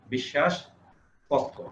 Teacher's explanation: স 2 বার উচ্চারিত হয়েছে এবং পক্ষ, ক 2 বার উচ্চারিত হয়েছে।